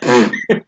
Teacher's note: he describes the sound as a bilabial fricative